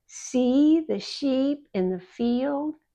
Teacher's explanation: The long E sound, the mouth is barely open and very wide.